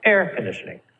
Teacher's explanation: two nouns a now with two parts really two nouns together you're going to stress the first part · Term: compound nouns